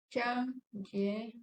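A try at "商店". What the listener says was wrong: Só que o Dian é no quarto tom, tem que falar um pouquinho mais rápido. Shang Dian. Shang Dian, tá? E tem que fechar o N com a língua, ó. Shang Dian. Shang Dian. Ó, você tem que encostar a língua no céu da boca na hora de falar. Shangdian.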